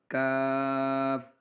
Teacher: یہ تالو کے سخت حصے اور زبان کے درمیانی حصے سے ادا ہوگا